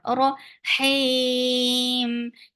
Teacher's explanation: Temporary sukun has turned just 2 counts long vowel into 4 and this is umad arid lis sakun.